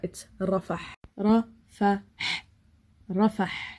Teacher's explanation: So close your throat and push out some air. And the Ra, again, the R is rolled.